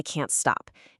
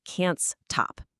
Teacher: You take a phrase like, "I can't stop." Instead of thinking about the word stop, which starts with that illegal cluster, you trick your brain. You mentally attach the s to the end of the word that came before it. So, can't stop becomes can'ts top.